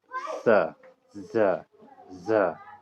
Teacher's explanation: दांत के जड़ पर जाके जीभ सटता है और वहां से उत्पन्न होती है ध्वनि